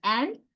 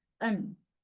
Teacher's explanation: these strong vowels are replaced by the weak vowel called schwa in the weak form